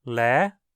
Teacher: Você sobe o tom no meio da vogal, dando um leve ar de pergunta. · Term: tom ascendente